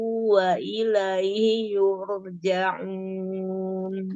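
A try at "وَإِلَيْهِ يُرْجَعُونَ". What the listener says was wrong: H-nya enggak kedengaran terseret.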